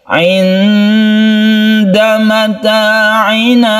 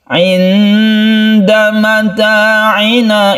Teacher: Ini adalah nun bertemu dengan dal, kita sebut dengan ikhfa hakiki. Ikhfa artinya samar dan kita panjangkan sedikit. Ketika kita membaca nun, kita bersiap membaca dal.